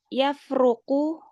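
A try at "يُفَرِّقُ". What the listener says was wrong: Farroko. Wazannya fa'ala yufa'ilu. Farroko. Enggak. Itu kalau 3 hurufnya farroko yafroku. Tapi kalau wazannya farroko, rohnya ditasdid. Fa'ala. Farroko yufarriku.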